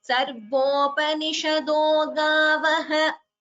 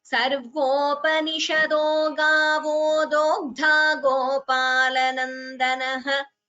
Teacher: However, if you split sarvopanishado gavah, if you are splitting there, if you're taking a pause, you have to chant it as gavaha and not as gavo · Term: Visarga Sandhi